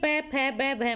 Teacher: होठ टच हो रहे हैं ना, तो ये कौन से व्यंजन हो गए? ओष्ठ्य व्यंजन हो गए।